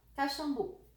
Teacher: Sílaba forte de Caxambu. Bu. A última.